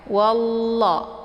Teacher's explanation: Nah, ini dinamakan dengan lafzul jalalah tafkhimun mufakkamun. Jadi cara bacanya tebal karena sebelum lafzul jalalah itu ada harokat fathah ya.